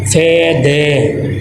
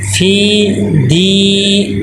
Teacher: یا مدہ کو مجہول نہیں پڑھیں گے. فے دے، فی دی، ایک الف کے برابر دونوں لمبے ہوں گے.